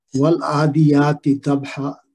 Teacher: والعادیات ضبحا، اس میں عین پہ کھڑی زبر ہے تو اس کو وہ جو بدل الف مد ہے 2 حرکت لمبی کریں گے